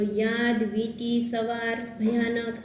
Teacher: સ્વરની પહેલાં ય અને વનો ઉચ્ચાર થઈ જાય છે એટલે ત્યારે એનું ઉચ્ચારણ ચોક્કસ વ્યંજન જેવું થાય